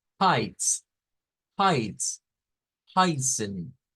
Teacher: esa J sin vibración es como una aspiración que hacemos de como cuando estamos jadeando